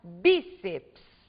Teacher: nós temos aqui a sílaba tônica sendo a penúltima sílaba da palavra portanto a palavra bíceps é uma palavra paroxítona terminada em ps